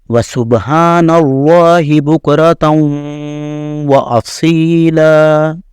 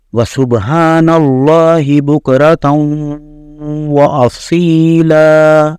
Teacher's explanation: لام کے اوپر 2 زبر ہیں، بعد میں الف ہے، تو اس کی مقدار بھی 1 سے 2 سیکنڈ کھینچی جائے گی